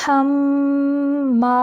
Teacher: وم رأتہ، آگے حما، یہاں پہ ہا کو واضح پڑھیں گے اور میم مشدد کا غنہ ناک کی جڑ سے یعنی ناک کے بانسا سے نکالیں گے، اور آگے الف مدہ ہے، الف مدہ کی آواز کو منہ سے نکالیں گے۔